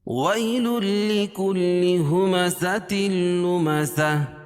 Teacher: ہمزۃ لمزہ، یہاں بھی تنوین کے بعد ادغام بلا غنہ کے 2 حرفوں میں سے لام ہے، تو یہاں بھی اظہار کریں گے، ظاہر کر کے پڑھیں گے۔ لمزہ، اور گول تا پر وقفہ کی صورت میں اس کو ہائے ساکنہ سے بدل دیتے ہیں